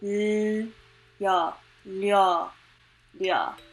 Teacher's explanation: An 'L/R' sound with a 'yuh' sound Would make a 'lyuh' sound